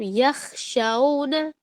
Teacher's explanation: خا کی کیا ہے کہ اس میں خراش ہوتی ہے, حلق میں خراش آتی ہے